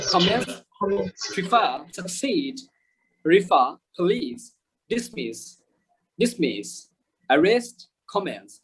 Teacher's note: we stress the second syllable